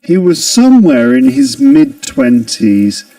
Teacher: We mentioned that there's a linking ra here, connecting somewhere and in